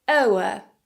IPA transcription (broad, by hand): əʊə